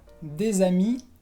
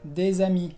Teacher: la S al final es muda